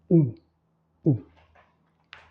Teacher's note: alta chiusa comme le I, donc l'espace est réduit entre la langue et le palais, arrotondata cette fois puisque vous avez la projection des lèvres en avant.